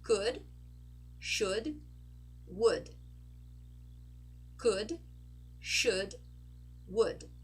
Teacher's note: notice we are not pronouncing the letter O and we are not pronouncing the letter L